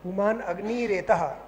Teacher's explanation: अग्नि जो है उसमें ई दीर्घ है